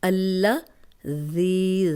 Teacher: زال نرم پڑھیں گے، 2 حرکات لمبا کریں گے، یا مدہ ہے، جزم علی یا پیچھے زیر ہے، 2 حرکات ہم لمبا کریں گے۔